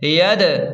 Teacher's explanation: دال ساکن ہے اس لیے یہاں قلقلہ ہوگا کیونکہ دال حروف قلقلہ میں سے ہے۔